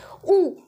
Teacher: ऊ बोलते समय हमारे जो ये ओठ की आकृति है वो किस नुमा हो जा रही है, वृत्त नुमा हो जा रही है, तो इसलिए ऊ क्या हो जाएगा, हमारा वृत्तमुखी स्वर हो जाएगा।